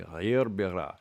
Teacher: He pronounces all his ayns.